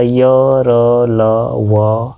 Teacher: को अंतस्थ व्यंजन कहते हैं। इनका उच्चारण जीभ, तालु, दंत और ओष्ठ के परस्पर सटने से होता है। लेकिन कहीं भी पूर्ण स्पर्श नहीं होता। कंप्लीट पूरी तरह से ऐसा नहीं सटता।